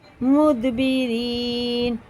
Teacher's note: را زیر کے ساتھ ہے تو باریک پڑھیں گے